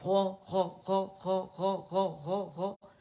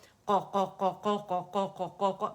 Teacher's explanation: آپ کی زبان کی جڑ اوپر جا کے نرم تالو کے قریب ہو گئی ہے. پھر آپ جو ہے آپ کو پتہ چلے گا کہ اچھا اس سے کہتے ہیں جڑ اٹھانا.